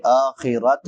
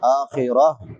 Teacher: وَلَهُ الْحَمْدُ فِي الْآخِرَةِ، فی الآخرہ، خا ادنا حلق سے، حلق کے شروع والے حصے سے جو منہ کے ساتھ ملا ہوا ہے، اور وقف کریں گے تا پہ تو تا کو ہا سے بدل دیں گے، آخرت نہیں پڑھیں گے، آخرہ۔